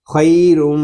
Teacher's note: را کو ہم میم کے ساتھ ملا دیں گے، یہاں پر ادغام ہو رہا ہے اور ادغام مال غنہ ہوگا۔